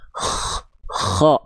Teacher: Jadi bukan betul-betul ngorok, tapi kayak kedengeran ada kasar-kasarnya. Kho. Tapi bukan yang gini, bukan yang lebay begini. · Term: huruf kha